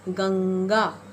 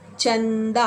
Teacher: अनुस्वार का उच्चारण हम जब भी करते हैं तो स्वर हमारे नाक से बाहर की ओर जाते हैं